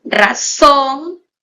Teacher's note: razón es una palabra formada por dos sílabas la mayor fuerza de voz está en la última sílaba y termina en la consonante n por tanto es una palabra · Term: palabra aguda